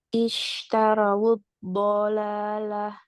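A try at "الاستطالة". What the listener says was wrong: Nah, ya Mbak dapat, Masya Allah.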